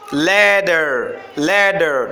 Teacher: Je prononce bien les T au milieu de deux voyelles. Ça se prononce comme D. Later, later dans l'anglais américain.